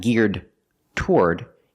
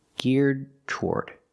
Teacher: you do a stop D and then release the T